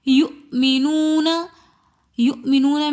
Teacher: یؤمنون، یؤمنون میں واو ساکن، واو مدہ آ رہا ہے، واو ساکن اور اس سے پہلے پیش ہوں تو وہ واو مدہ ہوتی ہے۔ واو مدہ کو ہم 1 الف کی مقدار کھینچ کر پڑھتے ہیں۔